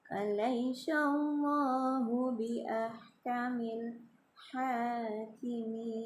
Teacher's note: lam jalalahnya dibaca tebal karena didahului dengan huruf berharkat fathah ya.